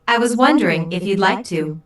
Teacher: Notice how the question goes up at the end, which shows that he is not overly confident.